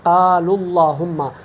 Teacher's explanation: وصل کے صورت میں ہم اس واو کو بھی نہیں پڑھتے اور یہ حمزہ تو ہم نہیں پڑھتے ہیں، باقی لام جو ہے لام میں ادغام کرتے ہیں، ایک لام پڑھتے ہیں، تو پھر صرف ہم اس پیش کو پڑھ کے اللہم پڑھتے ہیں قال اللہم۔